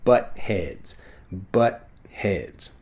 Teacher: the T sound basically disappears